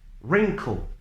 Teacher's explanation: these words should be pronounced WITHOUT the w sound only the r sound should be pronounced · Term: SILENT LETTER